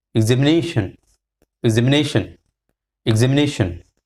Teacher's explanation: So ze has got the secondary stress, nation, and ne has got the primary stress.